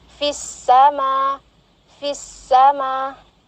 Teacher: alif lam syamsiyah, di mana langsung melebur ke huruf sin ya, di mana lamnya enggak dibaca ya